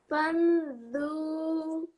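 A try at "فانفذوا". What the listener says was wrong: You forgot the fa in the middle.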